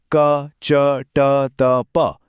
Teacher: हर line मुंह में आगे की तरफ बढ़ रही है, एकदम सिस्टमैटिक।